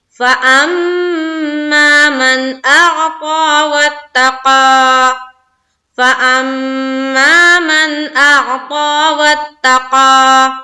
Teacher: اب یہاں دیکھیے نون ساکن ہے، اس کے بعد ہے حمزہ، ہے نا، تو نون ساکن کے بعد حمزہ جب آتی ہے تو وہ اظہار کا قاعدہ ہوتا ہے، تو یہاں صرف ظاہر کرنا ہے، یہاں پر دیر نہیں لگانی ہے